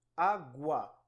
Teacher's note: O U é mais fraco, o A é mais forte. A pronúncia ela vai subindo. O som é do mais fraco para o mais alto. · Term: ditongo crescente